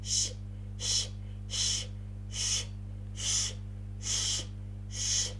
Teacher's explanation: When I pronounce sh, sh, I stretch my lips.